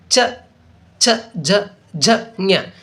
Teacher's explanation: ಇವು ತಾಲು ಅಥವಾ ಅಂಗಳದಲ್ಲಿ ಹುಟ್ಟುತ್ತವೆ. ಏನಪ್ಪ ಅಂದರೆ ಇವು ತಾಲು ಅಂದರೆ ನಮಗೆ ದವಡೆ ಒಂದು ಸ್ಥಾನದಲ್ಲಿ ಹುಟ್ಟುವಂತಹ ಅಕ್ಷರಗಳಿಗೆ ತಾಲವ್ಯ ಅಕ್ಷರಗಳು ಅಂತೇಳಿ ನಾವು ಕರೆಯುವುದುಂಟು.